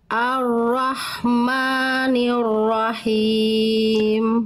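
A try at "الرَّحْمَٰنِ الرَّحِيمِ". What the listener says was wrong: Sip, kuatkan lagi getaran ro-nya ya. Ar-Rahmanir-Rahim.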